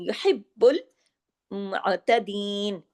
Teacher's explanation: با پہ تشدید ہے نا تو ڈبل با ہوگا